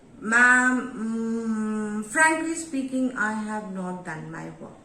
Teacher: So automatically your volume of the voice goes down. So that is a low tone.